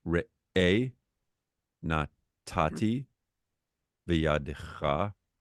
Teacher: By the way, if it's on the last syllable, the trope sometimes would be a little past it, but that's fine. You accent the last syllable, even if it's like on the last letter. And the last syllable is really the letter before that second last.